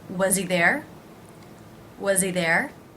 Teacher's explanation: I'm going to drop the H, reducing the word he.